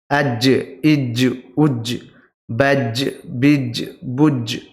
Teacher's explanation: জিহবার মাঝখান উপরের তালুতে লাগিয়ে দিতে হবে লাগিয়ে দিয়ে উচ্চারণ করতে হবে আজ দেখুন আজ বলুন দেখুন বুঝতে পারবেন যে জিহবার মাঝখানটা উপরের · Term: জিম